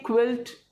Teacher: उसकी साउंड क आती है, लेकिन क के साथ हल्का सा व आता है, तभी हम क्या बोलते हैं क्विल्ट, जिसको हम बोलते हैं रजाई।